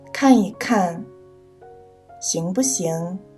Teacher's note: 在词语中间读轻声一和不